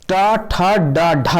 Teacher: मूर्धा के द्वारा बोले जाते हैं